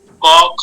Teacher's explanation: ক খ অল্প কাপছে তাই উচ্চারণ বেশি গম্ভীর হচ্ছে না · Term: অঘোষ